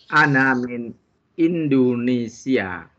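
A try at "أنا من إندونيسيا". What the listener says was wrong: Masya Allah, mumtaz.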